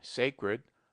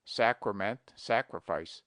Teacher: He invariably says sacrament and sacrifice with a very long A, but analogy is against him. We pronounce sacred with A long, sacred, but the derivations are properly pronounced with A short